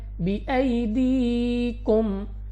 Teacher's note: میم ساکن کے بعد حمزہ، یہاں پہ ہمارے پاس اظہار شفوی کا قاعدہ ہے، اور اظہار شفوی کے قاعدے میں غنہ نہیں ہوتا، تو یہاں پہ آپ نے بغیر غنہ کی پڑھنا ہے